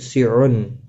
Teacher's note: تنوین کے بعد حروف حلقی کا عین آیا ہے، اظہار حلقی ہوگا۔